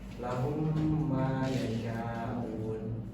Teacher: Iq mimi adalah hukum bacaan apabila mim mati bertemu dengan huruf mim. Cara membaca mim bertemu dilebur ke dalam mim kedua dan dibaca dengung atau gunah selama dua harakat